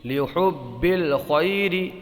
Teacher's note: یہاں پر یالین ہوگا بغیر کھینچے بغیر جھٹکا دیے، نرمی سے پڑھیں گے